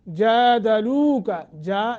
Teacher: ساکن کے بعد جیم ہے حروف اخفا میں سے، جادلوک، جا جیم کے اوپر کھڑی زبر ہے، ایک الف کے برابر مد